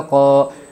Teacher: الف مدہ کو ایک الف کے مقدار کھینچ کر پڑھے گے